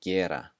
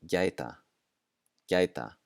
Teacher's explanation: we're going to pronounce that as if there were a J right after the G